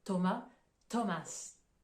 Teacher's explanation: la prononciation du h on l'entend pas en fait ça va uniquement être le T qui sera prononcé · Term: le son t